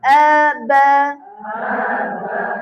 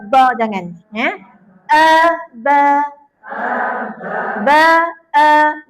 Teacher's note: Huruf ba tu bibir kita sentuh je. Bibir atas, bibir bawah sentuh. Ba. Jangan tekan-tekan banyak sangat.